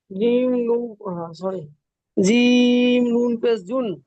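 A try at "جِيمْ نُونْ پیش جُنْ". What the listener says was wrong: নুন অক্ষরটিও তিন আলিফ টান দিয়ে পড়তে হবে।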